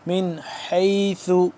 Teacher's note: من حیث، حا یا زبر حی، یہ حروف حلقی میں سے حا ہے، اور اس کو حلق کے درمیانی حصے سے نکالنا ہے، دوسرے ہا سے جدا کر کے